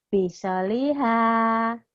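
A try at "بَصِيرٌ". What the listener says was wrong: Bukan baso ya, bukan biso, tapi baso. Baso lihat. Soalnya tadi bacanya biso lihat.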